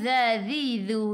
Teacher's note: hujung lidah keluar pada gigi depan